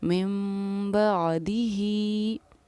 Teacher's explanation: मीम पर हम ठहराव करेंगे, गुन्ना करेंगे और इख़फ़ा करेंगे। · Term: इख़लाब